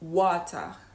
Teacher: a British native speaker is more likely to say water, right? Water and really pronounce a t fully.